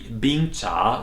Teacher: a falling rising Bing and a rising tone Cha